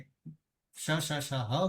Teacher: શષ હ બોલીશું તો ગરમ હવા આવશે પરિણામે એને ઉષ્મ કહીશું